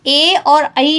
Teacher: ए और ऐ जो वर्ण होते हैं इनका जो उच्चारण स्थान होता है वह कंठ तालु होता है